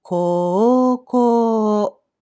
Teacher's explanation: When you have the sequence [o-u] in spelling, you pronounced it as a long vowel [o-o]. · So here again, the spelling and the pronunciation do not match, and the hiragana u in this instance is pronounced as o.